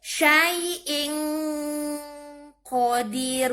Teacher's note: Tanwin bertemu kof. Dibaca samar. Nunnya nggak jelas. Suara N-nya nggak jelas. Hukumnya ikhfa.